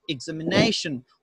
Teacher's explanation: so my primary stress goes to nei